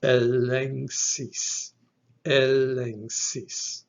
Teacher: the first epsilon is a short E sound, eh, followed by a lambda, which is an L sound, followed by another epsilon, which is the short E sound, eh. · It's that velar sibilant. So here, the initial gamma will be an NG sound, followed by KS.